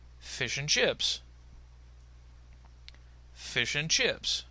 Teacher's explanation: we have linking to help connect the and to the word fish, and the intonational pattern indicates that the two ideas somehow belong together